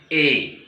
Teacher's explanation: कंठ खुला है और जिह्वा तालु के पास आकर जो श्वास अंदर से बाहर आ रही है उस श्वास को विकृत कर दे रही है। बात समझिए, जो श्वास अंदर से गल छिद्र से ऊपर की तरफ आ रही है, ठीक कंठ खुला है, क्योंकि स्वरों का जब उच्चारण होता है तो स्वर विवृत होते हैं।